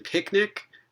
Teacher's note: that second consonant na is a sonorant and we find a voiceless stop before it